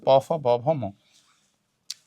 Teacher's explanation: প ফ ব ভ ম সবগুলোতে দেখো এই দুই ঠোঁট স্পর্শ করতেছে। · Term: ওষ্ঠবর্ণ